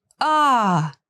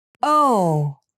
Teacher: these sounds are quite similar but the a is more open than the O